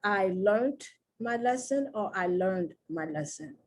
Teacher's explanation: it really is the same sound because the ed almost sounds like a t